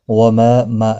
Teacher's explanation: ما الف مدہ ہے ایک الف کی مقدار کے برابر کھینچ کر پڑھیں گے